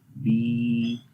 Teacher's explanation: یا کے اندر بھی زبان جو ہے وہ تھوڑی سی اوپر کی طرف جا رہی ہے، ٹھیک ہے. تو آواز اس جگہ سے آئے گی. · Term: یا مدہ